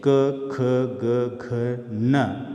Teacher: क वर्ग यानी क, ख, ग, घ, न, ये कंठ का स्पर्श करती है